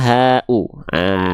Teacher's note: dia dilafalkan dari pangkal tenggorokan